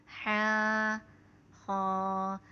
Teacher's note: حا اور خا ان دونوں کو ایک الف کی مقدار کھینچ کے پڑھتے ہیں